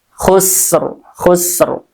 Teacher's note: Nah, di sini sin ya, dia juga mempunyai sifat sofir ya, berdesis, ada desisan. Jadi suaranya terdengar jelas ya.